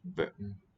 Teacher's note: the glottal stop that comes in certain words